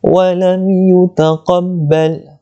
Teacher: Mim mati bertemu dengan ya, izhar syafawi, jelaskan bunyi mim, tidak perlu dengung.